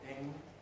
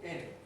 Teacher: Standard English has a velar nasal, ing, but in non-standard English, almost everywhere in the English-speaking world, has an alveolar nasal. So we have a non-standard form with in.